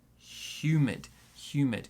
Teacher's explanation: two sounds in this word. The stress is on the first one.